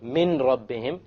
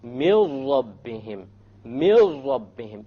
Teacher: So you don't say min rabbihim, you drop it. You drop the noon and you merge the meme with the ra. And you say, mil rabbihim, mil rabbihim, immediately. · you drop the sound of n, and you merge what is before with what is after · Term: idgham without gunna